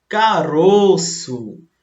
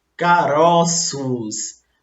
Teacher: o som da sílaba tônica no singular é fechado, o, e no plural é aberto, ó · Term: plural metafônico